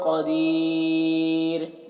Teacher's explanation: دیر یہاں پر وقف کریں گے تو مد عارض وقفی ہوگا اور را کو باریک پڑھیں گے